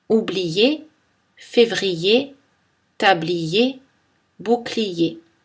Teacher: le son y la voyelle y reste présente en d'autres termes le glissement a lieu mais la voyelle i ne tombe pas on la conserve on appelle cela glissement partiel · le I est prononcé I, mais la syllabe qui suit commence par la semi-voyelle Y